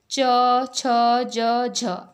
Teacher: अगला देखते हैं हम स्पर्श संघर्षी व्यंजन। इन व्यंजनों के उच्चारण में जिह्वा का अग्रभाग व तालु के मध्य स्पर्श एवं संघर्ष दोनों ही होते हैं